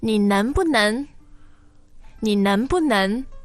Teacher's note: the tones there are 能 second tone, 不 fourth